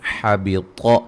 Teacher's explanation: پہ قلقلہ، قاف پہ قاف کو موٹا ادا کریں گے، حبط، طا کو موٹا ادا کریں گے